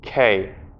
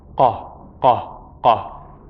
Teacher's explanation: It's similar to a K sound, but what's happening is that you're bringing the tongue farther back and it's hitting farther back. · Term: qaaf